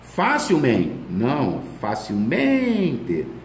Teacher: Advérbio terminado em mente, a sílaba tônica é o men.